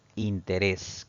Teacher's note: la mayor fuerza de voz recae en la última sílaba, contando siempre de derecha a izquierda, y además termina en consonante S. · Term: palabra aguda